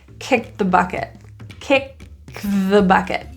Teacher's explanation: And then we have a th for the, it's 3 consonants in a row, so we like to get rid of the T, especially if the T is in the middle.